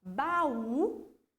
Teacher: eu aumento o tom de voz no U. Então, é a minha última sílaba tônica.